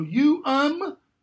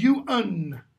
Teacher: Final syllables ending in m become final syllables ending in n.